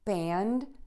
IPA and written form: bænd (band)